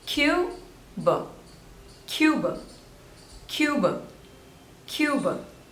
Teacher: two syllables and stress is on the first one